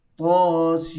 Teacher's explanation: Ta 2 harakat, Sin dibaca dengan 6 harakat. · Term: mad lazim harfi mukhaffaf